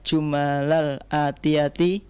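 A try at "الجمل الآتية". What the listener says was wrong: Al-jumalal atiyata, laysa atiyati.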